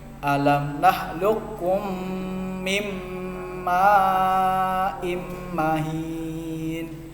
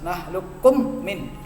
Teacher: Mim sukun bertemu mim, jangan sampai kalian bacanya dengan cara jelas. Nakhluqkum min, itu jelas salahnya. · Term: idgham mislain